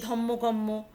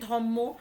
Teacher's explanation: ধর্ম থেকে ধম্ম, রটা উঠে গিয়ে যুক্ত ব্যঞ্জন ছিল, যুক্ত ব্যঞ্জন থেকে সেটা হয়ে গেল যুগ্ম ব্যঞ্জন, ধর্ম, র আর ম, সেটা যুগ্ম ব্যঞ্জন হয়ে গিয়ে হয়ে দাঁড়ালো ধম্ম, ধ ময় ময়।